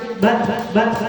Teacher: ketika Ta ini sukun maka dia ada sedikit mengalir suaranya